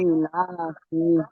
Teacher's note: ইলাফি, তো এই সেই কোরআন শরীফের সূরা আছে, তো এখানে যে একটা টান ইলা হবে সেটা টান দিতে হবে, ইলাফি। ইটা টান, লাটা টান, ফাটা টান হবে না